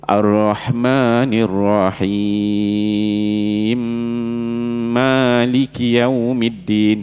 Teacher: Dia masuk. Idgham kabir tu mim pertama masuk mim kedua, dia sabdu terus.